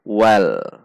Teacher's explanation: kesalahan yang sering terjadi adalah tidak membaca lam namun membaca Wow atau bukan wall harusnya karena ini lam dibaca well bukan wow